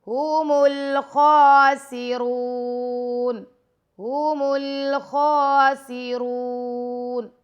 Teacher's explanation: خواہ کو موٹا پڑھیں گے اور را کو بھی موٹا پڑھیں گے. را کے ساتھ واؤ مدہ ہے تو خواہ کے اوپر کھڑا زبر ہے.